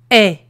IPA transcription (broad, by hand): ɛ